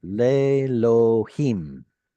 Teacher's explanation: there's no vowel attached to the aleph. It has quiesced, so don't even pronounce it.